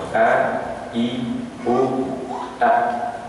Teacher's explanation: Jadi hamzah keluar dari tenggorokan yang paling bawah.